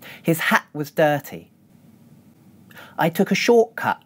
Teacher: As you can hear, there are glottal stops in the words ‘hat’, ‘short’ and ‘cut’. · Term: glottal reinforcement